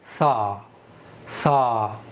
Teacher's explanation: नरमी की सिफत है, यानी सा को सॉफ्ट करके पढ़ना चाहिए और बारीक पढ़ना चाहिए, यानी आवाज़ नीचे जाएगी। जैसे सा, सा मोटा नहीं कर सकते इसको, क्योंकि हुरूफ़ मुस्तालिया में से है ही नहीं।